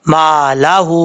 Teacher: ہا کے اوپر الٹا پیش ہے اور اوپر مد بھی ہے، اس کو اڑھائی الف کے برابر لمبا کر سکتے ہیں، مد منفصل کہا جاتا ہے اس کو۔